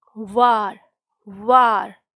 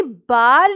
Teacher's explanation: लेकिन अगर मैं कहती हूँ कि सांप के ऊपर मोर ने वार किया, वार वार, तो मेरे जो होठ हैं वो आपस में मिले नहीं बल्कि थोड़े राउंड हुए थे।